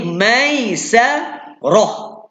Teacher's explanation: Jadi ta bulat mati jadi bunyi ha ataupun bunyi h.